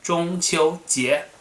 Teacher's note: 中 first tone, 秋 first tone, 节 second tone